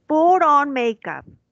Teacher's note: los americanos muchas veces la T la pronuncian como R